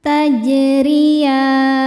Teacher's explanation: Huruf ro dibaca secara tarqiq karena berharokat kasroh. Cara bacanya ditipiskan.